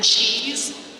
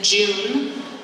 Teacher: affricates, because they are a mixture between fricatives and stops